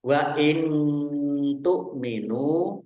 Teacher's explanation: nun sukun bertemu dengan huruf ta, bacaan ikhfa dibaca samar-samar